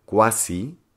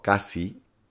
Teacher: A veces la combinación qua, quo del latín pierde el elemento bilabio velar la W.